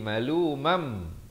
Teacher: Fi jahannama malumam, masuk beserta dengung dari sini. Daripada maluman jadi malumam, tapi dengung 2 harakat. Malumam, sempurna 2 baru masuk.